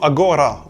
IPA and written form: a.ˈgo.ɾa (agora)